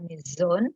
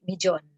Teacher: Perubahan bunyi frikatif alveolar bersuara z menjadi plosif palatal bersuara j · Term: palatalisasi